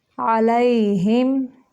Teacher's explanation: میم کو صرف ظاہر کریں گے، یہاں پہ بھی اظہار شفوی ہے